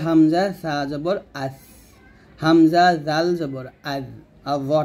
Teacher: এই তিনটা অক্ষর আমরা জিহ্বার আগা উপরের দাঁতের আগার সঙ্গে লাগাবো · সা, জাল, জ, এই 3টি হরফ উচ্চারণ করার সময় জিহ্বাটা যেন কোনোভাবেই নিচের দাঁতে না লাগে, তো অবশ্যই উপরের দাঁতে লাগাতে হবে।